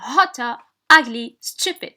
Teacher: stress is in the first syllable because it is an adjective and has 2 syllables